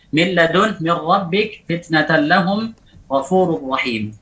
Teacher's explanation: Ini tanwin nun sakinah dan tanwin yang diidghamkan pada lam dan ra bi ghairi gunnah, tanpa gunnah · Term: idgham bila gunnah